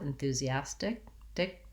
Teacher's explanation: This T we might do as more of a flap, enthusiastic, dick.